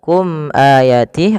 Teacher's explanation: izhar syafawi yaitu suara mimnya dijelaskan izhar artinya jelas syafawi berkenaan dengan bibir kita maka ketika ada